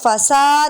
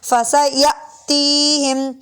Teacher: حمزہ ساکن ہے جھٹکا دیں گے، فسا نہیں پڑھ سکتے، فسیأتیہم۔